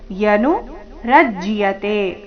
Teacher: ರ ಮೇಲೆ ಆಘಾತ ಮುಂದೆ ಅರ್ಧ ಜ ಪೂರ್ತಿ ಯ ಸೇರಿ ಸಂಯುಕ್ತಾಕ್ಷರ